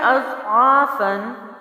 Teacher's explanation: تو یہاں پر کچھ لوگ غلطی کیا کرتے ہیں کہ موٹے حروف کی وجہ سے پورا حرف جو ہے آگے پیچھے کے جو حرف ہیں ان کو بھی موٹا کر دیتے ہیں، تو یہاں پر آپ نے حمزہ کی آواز کو باریک اور ضاد کو موٹا رکھنا ہے